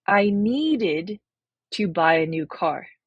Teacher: the ID ending where you add an extra syllable